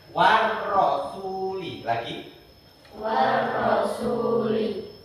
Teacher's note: Tapi karena dia asyamsiyah, bacanya harus ditasdidkan, dimasukkan